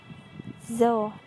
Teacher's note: ujung lidah sedikit keluar seperti zo, namun tebal